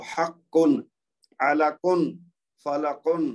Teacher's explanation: اسی طرح کاف جو ہے وہ حقن یعنی یہ جو دوسرا کاف ہے نا کاف سے کاف کی آواز کو ڈیفرینشیٹ کریں گے. کیسے کہ کاف کی آواز ایک تو ایک اپنے حلق کے خاص حصے سے نکلتی ہے, دوسرا اس کی آواز بلندی کی طرف جائے گی